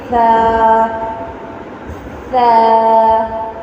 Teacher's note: زبان کی نوک جب ثنایا اولیہ کے کنارے سے لگے گی تو فا ادا ہوگا۔